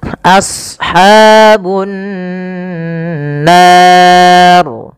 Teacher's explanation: As-sad, ya, huruf sad tebal, jangan as, jangan sin, tapi as ya, a-nya tipis, sadnya tebal. Karena sad punya sifat huruf isti'ala dan idbaq.